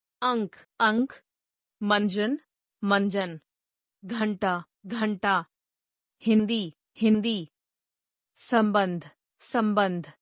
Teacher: अनुस्वार का उच्चारण स्वरों के बाद किया जाता है तथा इसका उच्चारण नाक से किया जाता है